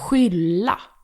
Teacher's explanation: SK becomes a h sound. That doesn't really exist in English. The best way to describe it is to compare it to the J in the Spanish name Juan.